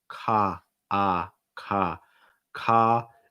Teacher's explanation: The first syllable of Colorado, you want to make sure your mouth is wide and your tongue is down.